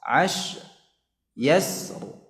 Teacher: Jadi shinnya ya dibaca dengan rakhawah.